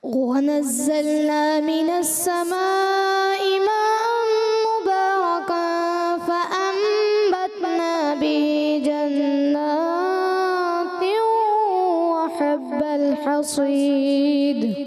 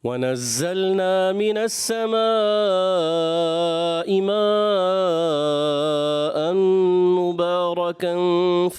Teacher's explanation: दूसरी मद्दे मुत्तसिल जो कि मद्दे वाजिब भी है छोड़ दी